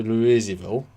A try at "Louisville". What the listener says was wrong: Louisville. Don't ever say Louisville. Louisville. Don't... Nope, it's not Louise. It's not a girl's name. It's Louis. Interview with a Vampire. Louis.